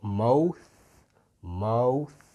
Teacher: what we call a dental fricative this the th8 sound so that would be a voiceless Dental fricative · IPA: /maʊθ/